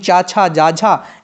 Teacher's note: च छ ज झ ये आपके सारे तालव्य होते हैं